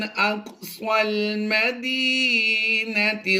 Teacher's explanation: सौत की आवाज़ पुर होती है, ये हुरूफ़ मुस्तालिया से है, तो इसे हम पुर करके ही पढ़ेंगे